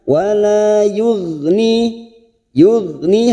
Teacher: ada huruf ghain sukun, jangan dipantulkan karena bukan qalqalah, kita tahan. Dia mempunyai sifat jahar dan rikhwah.